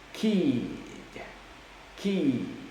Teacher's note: There's no vibration when I'm pronouncing the letter K because the K is voiceless.